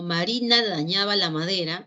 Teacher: al finalizar la oración la inflexión de voz los cambios tonales las frecuencias tienden a sufrir un descenso